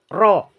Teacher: pertama kita lihatnya disertai oleh cekungan jadi harus cekung begini dan lisan terangkat lebih dekat ke tenggorokan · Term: R tebal